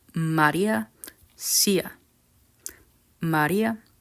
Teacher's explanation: Spanish does have a central vowel but it's not a mid vowel it's a low vowel and that vowel is a the same vowel at the end of Maria